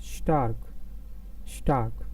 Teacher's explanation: the sound of s is not s but you can say it's more like s h